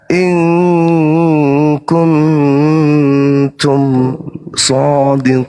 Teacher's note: nun mati harus disamarkan dia dan didengungkan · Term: Ikfa